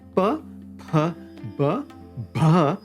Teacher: Oshta means lips. This is where the sound is made by both lips touching together to make the sound. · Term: labials